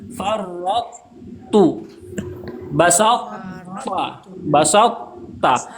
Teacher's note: Jadi cara membaca farrattu itu masih ada sifat to-nya. Masih ada tebalnya sedikit. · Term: idgham naqis